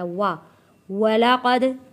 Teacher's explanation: وَلَقَدْ كَذَّبَ الَّذِينَ، وَلَقَدْ یہاں پہ دال پہ قلقلہ ادا کیا ہے، قاف کو موٹا پڑا ہے اور واو میں ہونٹوں کو گول کر کے ہونٹوں سے اس واو کو ادا کیا ہے۔ وا وَلَقَدْ كَذَّبَ الَّذِينَ، یہاں پر بھی دال ہے، دال کو نرمی کے ساتھ پڑھنا ہے، لیکن جو تشدید ہے، تشدید کا یہاں پہ ہم نے تشدید کو سختی کے ساتھ یہاں پہ ادا کرنا ہے۔